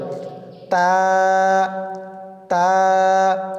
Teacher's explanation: জিব্বার আগা সামনের উপরের দুই দাঁতের গোড়ার সঙ্গে লাগিয়ে উচ্চারিত হয় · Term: তার মাখরাজ